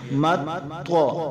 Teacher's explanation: طوا حروف قلقلہ میں سے تو جوڑ میں ساکن تھی تو قلقلہ کیا